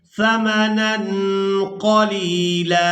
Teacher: ظُهُورِهِمْ وَاشْتَرَوْا بِهِ ثَمَنًا قَلِيلًا۔ یہاں پر وقف کریں گے تو وقف کی صورت میں لام پر ایک زبر ادا کریں گے اور اس کو ایک الف مقدار کھینچ کر ادا کریں گے